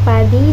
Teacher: Fonem I adalah vokal tinggi depan dengan cara kedua bibir sedikit terentang ke samping.